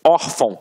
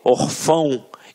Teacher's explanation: reparem que a sílaba tônica está na penúltima sílaba. Por isso é uma paroxítona.